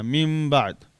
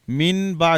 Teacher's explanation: ہم نے با کی وجہ سے اس نون کو میم ساکنہ پڑھنا ہے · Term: اقلاب